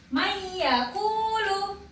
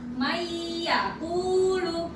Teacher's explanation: Jadi nunnya ini hampir tidak dibaca ya, karena didengungkan dimasukkan ke huruf ya. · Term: idgham bihuna